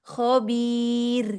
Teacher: rohnya tarkik ya di akhir